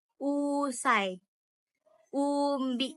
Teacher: Vokal U ini bibir dimanjukkan sedikit dan bentuknya agak bunder